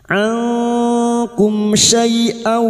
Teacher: Nun sukun atau tanwin yang bertemu dengan salah satu dari huruf 15 ini termasuk huruf kaf, maka bunyi nun sukun dibaca samar dan mendengung selama 3 harokat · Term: ikhfa hakiki